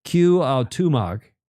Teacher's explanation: they say the accents on the second syllable